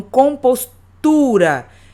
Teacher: compostura o tu eu falo com mais intensidade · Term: sílaba tônica